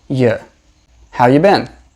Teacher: when we are not stressing the word you we usually pronounce it with a schwa sound